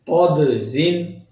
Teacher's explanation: قدرن دال قلقلہ حروف میں سے ہے، لہٰذا اس کی آواز دال کی لوٹ کر آئے گی